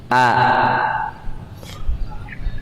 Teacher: Hamzah, alif, tempat keluarnya di mana? Di pita suara. Kerongkongan paling bawah. Kalau dalam ilmu tajwidnya disebut dengan aqsal halqi.